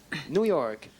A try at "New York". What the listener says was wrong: Un peu plus d'emphase sur le York.